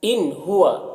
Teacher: نون ساکن کے بعد ہا ہے تو اظہار حقیقی ہوگا، جلد پڑھنا۔